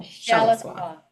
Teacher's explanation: The accent is on the first syllable.